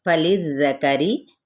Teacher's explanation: لام کی زیر کو ذال کے ساتھ نرمی کے ساتھ ادا کرنا ہے، حرکت کو لمبا نہیں کریں گے، را باریک پڑھا جائے گا اپنے زیر کی وجہ سے